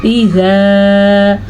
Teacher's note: اذا الف سے پہلے زبر آنے کی وجہ سے الف مدہ ہے تو اسے کھینچ کے پڑے گی، یعنی کہ اذا.